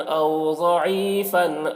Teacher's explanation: ضعیفن کا ضاد کو پر پڑھیں گے، ضاد حروف مستعلیہ میں سے ہے